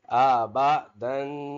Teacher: تنوین کی دال کے اوپر دو زبر ہے یعنی تنوین ہے تو اس کو ناک میں اواز اس کی پیدا کریں گے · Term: غنہ